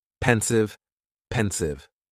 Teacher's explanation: the stress is on that first syllable